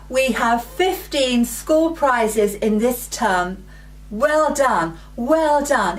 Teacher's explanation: It's higher, it's happy, it's excited. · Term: High pitch